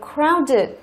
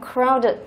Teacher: Crowded cũng là tính từ 2 âm tiết, trọng âm rơi vào âm thứ nhất